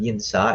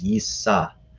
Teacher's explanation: the n tends to assimilate into the consonant that comes after it, which in this case is a samech. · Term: assimilation